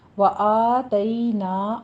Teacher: تئی میں یا لین ہے، نرمی سے ادا کیجیے، 1 سے 2 حرکتوں کے درمیان اس کی ادائیگی ہوتی ہے · آ اور نا میں فتح قائمہ، الف مدہ ہے، 2 کاؤنٹ کرنے ہیں